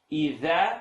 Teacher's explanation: Tip of the tongue, edge of the top teeth.